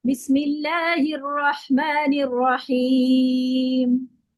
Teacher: मैंने अपनी आवाज को थोड़ा सा भारी करके पढ़ा